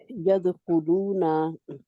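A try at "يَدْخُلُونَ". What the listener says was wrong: नून को खींचना नहीं है। नहीं आप जा क्यों कहते हैं आगे मद है। हमने पढ़ा हरूफे मद्दा कहाँ से आते हैं और ये दो काउंट लंबे होते हैं।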